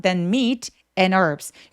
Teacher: H 없이 herb라고 발음합니다. 그래서 요거는 무음이에요.